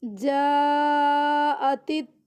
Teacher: मीम पे गुन्ना करना है त्वाम्मतुल नाक में आवाज़ लेके जानी है